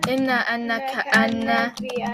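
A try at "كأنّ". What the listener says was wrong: ka'anna, good.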